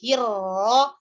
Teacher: Tapi ro itu tebal, bukan monyong. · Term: ro tebal